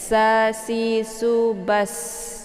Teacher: Minassa ya. Sa posisi huruf sin ini yaitu bunyi anginnya itu jelas ya karena sifatnya safir. Jadi tipis bacaannya.